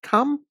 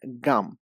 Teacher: So k is an unvoiced consonant. And the g sound in gum. So g is a voiced consonant.